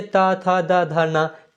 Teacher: जिस वर्ण के उच्चारण में जिह्वा ऊपरी दांतों को स्पर्श करती है उन्हें दंत वर्ण कहते हैं